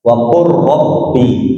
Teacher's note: Kalau idgam beda langsung dimasukkan. Jadi huruf lamnya masuk ke huruf ro, huruf qof-nya masuk ke huruf kaf.